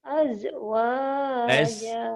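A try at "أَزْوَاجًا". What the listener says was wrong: Hati-hati orang Sunda mah suka begitu tuh. Yang keras jadi rapuh suka kebalik. Ini bukan pajaja ya, pajaza, maka balasan. Kalau pajaja tetangga orang itu mah. Zai ya.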